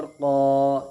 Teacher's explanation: क़ाफ अलिफ ज़बर क़ा, अलिफ मद्दा होगा इसलिए कि अलिफ से पहले क़ाफ के ऊपर ज़बर है, इसलिए अलिफ मद्दा होगा। अलिफ मद्दा को एक अलिफ के बराबर खींच करके अदा करेंगे